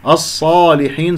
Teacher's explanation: الصاد الساكنة مفخمة مرتبة رابعة